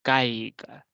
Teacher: la a que es una vocal abierta que va primero tiene la mayor fuerza de voz